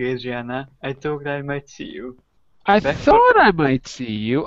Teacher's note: my voice is up in the air because I'm so surprised